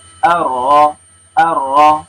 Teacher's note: ro, yaitu at-takrir, ujung lidah bergetar